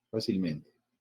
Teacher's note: la palabra fácilmente tiene 2 sílabas tónicas, tiene doble acentuación.